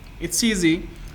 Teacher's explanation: the final sound is s sound. That's why it's connected with the initial sound of the second word, and that is vowel sound.